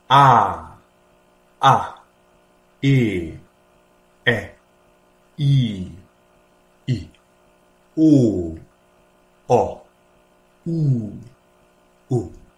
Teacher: avete notato che la i corta e la e corta hanno lo stesso suono